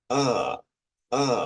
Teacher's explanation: un sonido más centralizado verdad la un poquito más retrocedido como la a del español